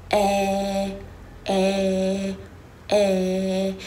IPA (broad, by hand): æ